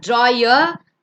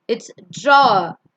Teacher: It's not drawer, it's draw. R is silent at the end.